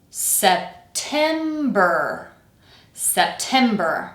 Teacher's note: Weak strong weak. The first syllable once again we're not reducing it.